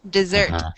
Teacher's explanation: notice the pronunciation of this word dessert the accent is on the second syllable